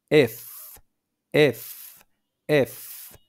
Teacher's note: যেখানে আপনি উপরের দাঁতটা নিয়ে এসে নিচের ঠোঁটের ভেতরের অংশে লাগাইলেন তখন এফ উচ্চারণ হলো